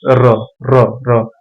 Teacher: जब आप र का उच्चारण करेंगे तो कंपन उत्पन्न होता है, जैसे र र र, इसलिए इसको प्रकंपित या लुंठित वर्ण कहा जाता है, ठीक है।